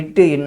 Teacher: இட் இன் பிறக்கும் இடம் என்ன இதுல நாவோட நுனி அன்னத்தின் நுனியை தொடுவதால் பிறக்கும்